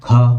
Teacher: क वर्ग में ख हमारा दूसरा अक्षर है घ हमारा चौथा अक्षर है तो यह हमारे महाप्राण हो गए